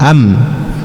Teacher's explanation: suara yang keluar dari mim itu ketika kita mensukunkan am, nah itu suara itu dia akan berbelok ya, berbelok atau dia akan mengarah ke bagian khayshum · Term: huruf mim